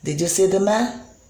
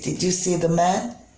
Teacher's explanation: did you see the man? You can see that the pitch is rising at the end. That is why it is rising intonation.